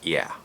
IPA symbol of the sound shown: iæ